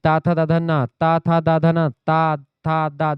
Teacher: दांत से स्पर्श होता है। दंत व्यंजन है ता थ ध न। · ठीक है, इसके अलावा फिर उसके बाद में ता था दाधना, ता था दाधना, ता था दा दांत से स्पर्श होता है, दंत व्यंजन है